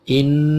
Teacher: Inna, ini nun ada tasydidnya, dibaca gunnah. In, udara dikeluarkan melalui hidung, ditahan agak lama di atas atau lebih dari 2 ketuk, bisa 3, bisa 4 ketuk.